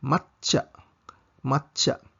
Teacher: dublihon ang CH sound sa tsa